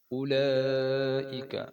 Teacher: اولا پہ جو مد ہے یہ 5 الفی لمبی ہوتی ہے اور یہ مد ضروری ہوتی ہے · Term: بڑی مد